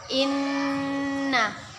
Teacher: Kita tahan dan kita dengungkan dua harokat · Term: gunnah